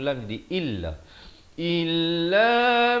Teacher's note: Hamzah paling bawah bunyi Ih bukan e jadi bila bertemu lagi Illa Illa manis Tarakan sama ada bunyi